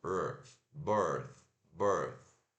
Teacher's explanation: E esse aqui é aquele símbolo do som do TH, o TH desvozeado. Então, língua na ponta da língua nos dentes da frente e solta o ar. E não vibra as cordas vocais. Então, B, R, birth, birth.